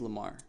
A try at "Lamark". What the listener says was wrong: Lamark. Yes, gotta give it a K at the end.